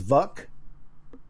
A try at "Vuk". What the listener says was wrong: Vuk. We're very specific to put that long U in there.